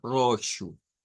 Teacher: en algunos casos se puede pronunciar con r fuerte sobre todo nos dice en el sur de Brasil en y en las zonas Rurales de Portugal ahí podría sonar